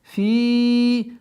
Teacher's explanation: Долгота в размере 4 огласовок кесру удлиняем.